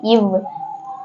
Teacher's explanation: கீழ் உதடும் மேல்வாய் பல்லும் இணைவதால் பிறக்கும் எழுத்து